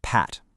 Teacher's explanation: Your lips come together for that P sound. That's called bilabial.